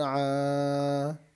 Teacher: یہ الف مدہ ہے، اس کو ایک الف کی مقدار کھینچ کر پڑھنا ہے۔